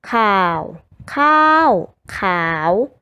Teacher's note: 3เสียงคือเสียงเอกเสียงโทและเสียงจัตวา